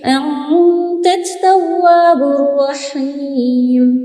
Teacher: تا کو تا کے ساتھ ملائیں گے، انت التواب نہیں کہیں گے، لام میں نہیں ملانا، تا میں ملانا.